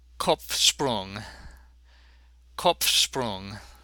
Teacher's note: In the word Kopf, both the P and the F are pronounced. I told you every letter counts, and the P seems to interfere somewhat with the sh sound following it.